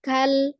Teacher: ujung lidahnya menekan langit-langit supaya mengembalikan mahrojnya.